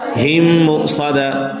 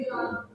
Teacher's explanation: So the both meme would be merged. It would be equal to meme mushaddad. Because always when there is shad on any letter, so double voice comes from the same letter. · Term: Idgham